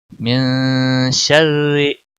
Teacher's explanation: रा बारीक पढ़ेंगे क्योंकि रा के नीचे ज़ेर है